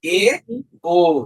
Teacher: এ আর ও যখন উচ্চারণ করবা ওই যে ই উচ্চারণ করার সময় যতটুকু ছিল তার চেয়ে একটু নিচে নেমে আসে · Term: উচ্চমধ্য